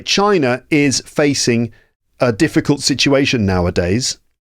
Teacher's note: when we pronounce a word with a vowel sound at the end, we do pronounce an R sound after it when the next word begins with a vowel